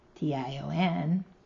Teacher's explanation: The shun in action has the schwa sound